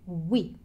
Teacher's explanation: He doesn't drag out the E sound. He doesn't spend much time saying the E sound.